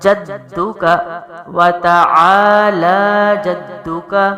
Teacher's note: جیم منہ کے درمیانی حصے سے ہے اور سختی اور زور دال پر لگے گا کیونکہ تشدید ہے